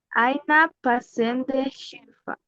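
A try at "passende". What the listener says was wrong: Ok, solo que cambie un poquito el sonido se le escucha muy como E. Cuando dice pasende, parece E. Tiene que ser más como shba. Pasenda, pasenda.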